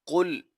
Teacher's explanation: قاف کو پر پڑھا جائے گا کیونکہ قاف حروف مستعلیہ میں سے ہے، تو اسی لیے قاف کو موٹا کر کے پڑھا جائے گا